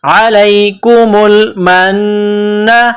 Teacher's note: نون مشدد ہے تو یہاں آواز ناک میں چھپائیں گے غنہ کریں گے